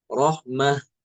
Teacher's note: Imam Alqisai bacanya dengan ha ya seakan-akan dia seperti tam marbutah